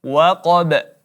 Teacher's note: Qa huruf tebal maka ditebalkan, kemudian huruf ba-nya kita pantulkan menjadi qalqalah.